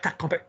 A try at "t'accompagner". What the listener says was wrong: Can you hear you going into tac? Yeah. T'accompagner. Keep it soft.